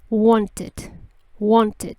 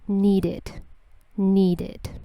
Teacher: no es una I latina sino que es el sonido it en inglés